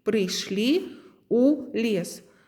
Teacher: Слово прыйшлі будзе заканчвацца галоснай і, а пасля галоснай у нескладовая будзе ў вас.